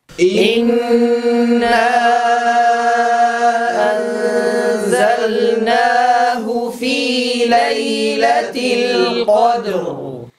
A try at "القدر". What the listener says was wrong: نتنبه لا نقول القدر، لا نكسر الدال بل نبقيها ساكنة، فإذا ما انتهينا من قلقلتها نطقنا بالراء، والراء كما تعلمون له زمن البينية، فبعد أن ننتهي من القلقلة كاملة نبدأ بنطق حرف الراء.